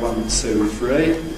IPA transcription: wʌn, tˢə̯u, frə̯i